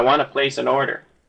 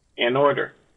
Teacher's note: an order it sounds almost like one word and order that is the liaison effect